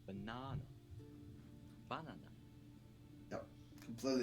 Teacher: the pitch drops right after the accented syllable